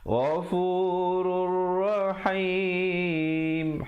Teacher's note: jangan kita baca Ghafurun Rahim, kena baca Ghafurur, masuk terus di atas ra yang bersabdu. Ghafurur Rahim, ha pedas ya, dan diwaqafkan dengan 2, 4 ataupun 6 harakat ma'aril sukun. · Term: idgham bila gunnah